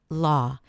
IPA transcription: lɔː